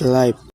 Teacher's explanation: instead of the sound F, he used P in pronouncing life.